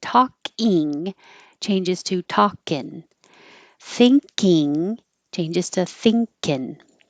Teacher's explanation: To make it casual, take off the ing, and that means that you change the in from the ng combination in the back to the n in the front. And the vowel also changes.